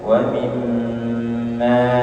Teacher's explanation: Dua huruf yang memiliki sifat ini, yang memiliki sifat gunnah, yaitu huruf nun dan mim, ya, maka ketika dia tasydid maka ditahan dua harakat. Atau ada yang mengatakan sampai 3 harokat, ya, sampai 3 harokat. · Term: gunnah musyaddadah